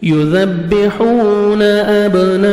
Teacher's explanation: با حروف قلقلہ میں سے ڈبل ساؤنڈ آئے گا، مد لازم ہے، الف مدے کے بعد اسی کلمہ میں حمزہ آ رہا ہے، 4 سے 5 سیکنڈ آپ نے ایکسٹرا مد کرنی ہے، کاف کو باریک پڑھنا ہے، میم ساکن کا اظہار ہے، جلدی پڑھیں گے۔